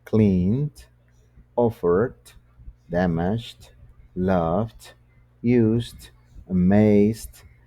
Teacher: cuando es sonoro, el sonido es un tanto más suave, es decir, suena d